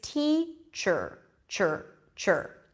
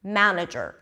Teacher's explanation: what you want to remember is that the R takes over the vowel before and connects to the consonant before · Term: schwa sound